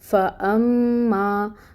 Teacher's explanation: فا میں ہمس ہوتی ہے، وہ آپ لے کے آئیں گے، اور اس کے اوپر فتحہ کی حرکت ہے، 1 کاؤنٹ ایک حرکت کے برابر پڑھیں گے، لمبا نہیں کرنا فا کو۔ فَأَمَّا، تو اب یہ جو حمزہ آ رہا ہے اس کے اوپر آپ کو فتحہ کی حرکت نظر آ رہی ہے، اس کو بھی ایک حرکت ہی پڑھیں گے، اور اس حمزہ کو محقق ادا کرنا ہے، بہت کلیئر ساؤنڈ آئے گی۔